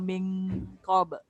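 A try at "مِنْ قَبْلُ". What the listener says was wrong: Tebal sikit. Min qabl. Lam tu jangan tebal, jangan qabl, jangan kat depan. Sebab tempat keluar lam dekat lidah, lidah hujung tu dekat lelangit ke belakang sikit. Min qabl, jangan qabl. Tu ke depan tu qabl, belakang.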